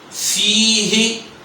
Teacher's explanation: فا کو دو حرکات کے برابر لمبا کیا جائے گا، نیچے کی طرف کھینچا جائے گا۔